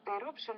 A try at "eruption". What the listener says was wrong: Okay, not bad, except for the R sound, is eruption, not eruption or occurred, but it's eruption and occurred. Eruption occurred.